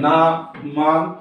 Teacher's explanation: इनको बोलते समय हमारे नासिक पर से हवा का उच्चारण होता है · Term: अनुनासिक